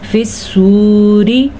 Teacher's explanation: فی الصوری، صاد کو پور پڑھا اور واو کو کھینچ کے پڑھیں گے کیونکہ اس واو ساکن سے پہلے پیش ہے تو ہم اس کو کھینچ کے پڑھیں گے۔